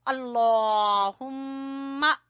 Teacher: मीम के ऊपर गुन्ना करेंगे, लफ्ज अल्लाह को मोटा पढ़ेंगे।